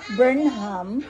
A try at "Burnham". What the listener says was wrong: You don't say the letter H.